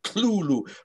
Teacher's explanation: the th is not really a th it's kind of like a harsh l sound